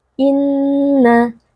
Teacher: Maf yang pertama Inna terdapat Nun almyaddadah Nun yang bertasdid wajibulunah wajib dibaca dengan dengung yang dipanjangkan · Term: wajibul gunnah